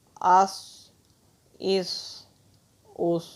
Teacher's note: صاد حروف مستعلیہ میں سے ہے، اس کو ہمیشہ موٹا پڑھا جاتا ہے